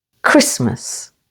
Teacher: Christmas with the stress on the first syllable